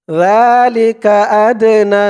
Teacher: ডালটা কলকলার হরফ ধাক্কা দিয়ে পড়তে হবে